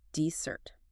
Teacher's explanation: You want more sugar, so you write two S's and you stress the sweet ending